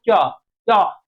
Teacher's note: च का देखो बिल्कुल सिंपल सा बोलो उच्चारण करके देखो च कहां देखो जीभ कहां लग रही है जाके तो च का उच्चारण स्थान करें तो तालव्य में जाके टच हो रही है